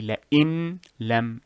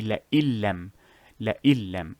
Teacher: But the idgham makes it easier to pronounce, so you will say la'illam, la'il. You remove the noon phonetically. La'il. You do not say la'in lam, you say la'illam, la'illam. · As if these two words are fused together and the noon has been removed. That is the rule for idgham.